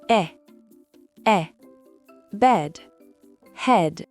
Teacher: il ressemble beaucoup au e français de paire. C'est un son court et ouvert. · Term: le son e